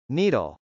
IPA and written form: nˈidəl (needle)